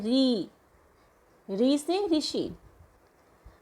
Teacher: मूर्धन्य, मूर्धा यानी तालु के आगे का भाग और दांत से थोड़ा पीछे का भाग